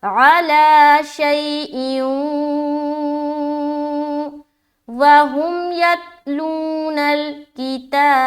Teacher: دو زیر کی تنوین کے بعد حرف واو آ گیا تو یہاں پر ادغام ناقص کرنا ہے، غنے کے ساتھ ادغام ہوگا